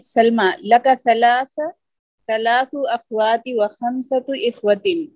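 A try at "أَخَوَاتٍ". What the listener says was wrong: Sister एक minute, hold on, आप एराब दुरुस्त नहीं पढ़ रही। अखवातिन, ये तनवीन की आवाज आनी चाहिए। इससे पहले अखवाती किया आप।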